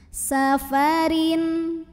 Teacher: Huruf ra dibunyikan secara tarqiq sebab ra-nya ini berbaris tanwin kasrah barisnya di bawah, maka bacanya tipis.